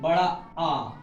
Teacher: मध्य भाग की बात की जाए तो बड़ा आ, तो उसमें जीभ का मध्य भाग होता है